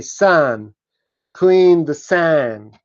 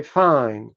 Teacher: one of the main features of the Western US dialect is that D is not pronounced after N